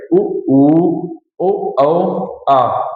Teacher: जिनके उच्चारण में जिह्वा का अंतिम भाग, है ना? जिह्वा का अंतिम भाग प्रयुक्त हो, पश्च स्वर कहलाते हैं